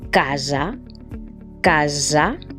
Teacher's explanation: s sorda por ejemplo la palabra cansada no cansada sin embargo si tenemos una s entre dos vocales vamos a tener el sonido de la esa Sonora por ejemplo la palabra casa casa no decimos casa sino casa